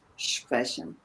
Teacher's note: we pronounce it a bit like an SCH at the beginning because it's easier to pronounce sprechen.